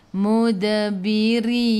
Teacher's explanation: Mud qalqalah surah, lantunannya kecil. · Matikan dengan huruf nun, hujung lidah menyentuh gusi atas.